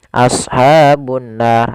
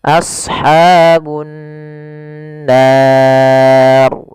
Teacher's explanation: alif lam yang kita tulis tapi tidak dibaca lamnya, sehingga lam tersebut diidghamkan ke huruf nun sehingga nunnya berharakat tasydid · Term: alif lam syamsiyah